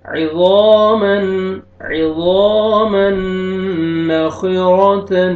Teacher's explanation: ضا کو موٹا کر کے پڑھیں گے، را کو بھی موٹا کر کے پڑھیں گے، را کے اوپر زبر ہے.